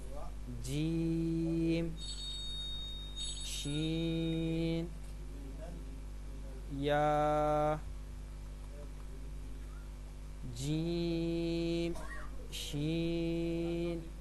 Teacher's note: یہ جو 3 حروف ہیں ان کا ایک ہی مخرج ہے. جیم، شین اور یا زبان کے درمیان اور تالو کے درمیان سے ادا ہوتے ہیں.